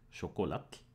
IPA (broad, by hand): xocolɑt